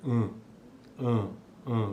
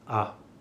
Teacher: também então a diferença que existe entre vogais orais e nasais a diferença básica é esta que uma precisa da cavidade nasal e a outra a oral não precisa